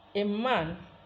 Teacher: A becomes nasalized because of the nasal sound that comes after it. We say that nasalization of A in man is progressive assimilation.